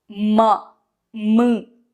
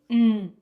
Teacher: Nose is the only ucharana sthana for an Anuswaraha. For ma, nose as well as the lips are the ucharana sthanas for Makara, but for Anuswara, it's a pure nasal sound. It is produced only in the nose.